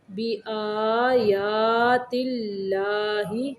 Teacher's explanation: اللہ کا لام باریک پڑھنا ہے